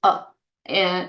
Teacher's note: the letter A in these words is pronounced as a very short sound called the schwa, which is a.